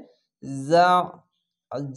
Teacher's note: আইনটিকে মোটা করে গলা চিপে পড়বেন। অবশ্যই আইনকে আলিফের মতো উচ্চারণ করবেন না